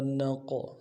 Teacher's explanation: نون قاف زبر نق، قاف موٹا حرف ہے اور حروف قلقلہ میں سے قلقلہ کریں گے